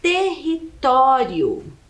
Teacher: uma palavra paroxítona que é aquela que tem a penúltima sílaba mais forte